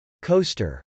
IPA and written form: kˈoʊstɚ (coaster)